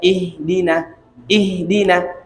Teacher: Ihdina yang seharusnya keluar dari pangkal tenggorokan biasa aja, ihdina, ihdina.